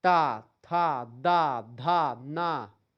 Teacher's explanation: व आपका दंत ओष्ठ यानी दांत और ओठ का सहारा लेकर के तीसरा है दंत व्यंजन। इनका उच्चारण ऊपर के दांतों की पंक्ति से जीभ जाकर के आपकी टकराती है।